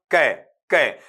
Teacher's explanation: velar में क्या होगा कि जो अपना कॉन्सोनेंट साउंड है वो सॉफ्ट पैलेट को टच करेगा, और कहां पर, back of the tongue touch करेगा आपका